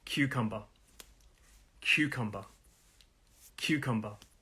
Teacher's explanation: 3 syllables, cucumber. The stress is on the first syllable.